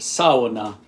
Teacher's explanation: certainly in Finland and Estonia, it's pronounced Sow-u-na. So 3 syllables. The first syllable is like a female pig, Sow-u-na, Sow-u-na.